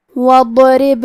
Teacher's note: کلمت وَاضْرِب میں شروعات میں الف ہے لیکن یہ حمزۃ وصل ہے تو ہم حمزہ کو ظاہر نہیں کریں گے